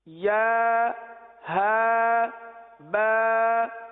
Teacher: یعنی ایک حرف ادا کریں، تھوڑا سا رک جائیں، اگلے حرف کو اس کے مخرج سے ادا کرنے کے لیے یہ رکنا ہوا، کیونکہ یا جو ہے یہ وسط لسان، وسط تالو، زبان کے درمیان اور تالو کے درمیان سے ادا ہوتا ہے، اور ہا جو سینے سے متصل حلق ہے یہاں سے ادا ہوتا ہے